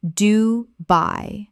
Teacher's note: I-l of Wight Isle of Wight Word 121 Dubai Common mispronunciation Dubai Correct pronunciation Dubai Two syllables with the stress clearly on the second.